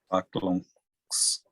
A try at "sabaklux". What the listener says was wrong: We add our ux, nice, ux. Now be careful. I hear, it almost sounds like you're saying unks. Unks is a different ending. It means something else. So don't do unks. Sabaklux. Yeah, so sabaklux.